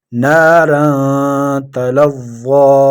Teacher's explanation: فأنذرتكم نارا تلظى نا مد اصلی، را تنوین کے بعد حروف اخفا یعنی 15 حروف میں سے تا آئے ہیں، یہاں اخفا ہوگا۔